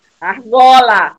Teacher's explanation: a sílaba tônica do argola é o gó na penúltima sílaba. Portanto, é uma palavra paroxítona, não é isso?